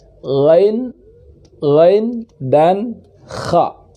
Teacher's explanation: Ini huruf ujung kerongkongan, ghain dan kha.